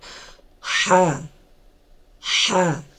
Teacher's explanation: কণ্ঠনালীর মাঝখান থেকে, হলকের মাঝখান থেকে, ভিতর থেকে আসবে, নিঃশ্বাস নিয়ে ছাড়তে হবে